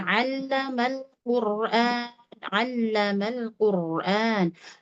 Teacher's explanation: Tekan betul makhraj huruf ain di katup tenggorokannya ya, ditekan.